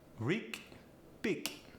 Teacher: The G goes to a K.